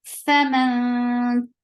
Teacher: This is ikhfa, light ikhfa, because ta is among light letters. So your tongue should be in a straight position.